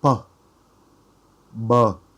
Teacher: you can feel more vibration when you pronouncing the b in comparison with p. Again, when pronouncing p, you should feel more in front at your lips and going out.